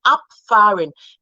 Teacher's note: when you have the B, it sounds like P when between a vowel and a consonant